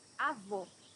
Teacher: Can you hear the difference between avó and avô? Here you have a closed O.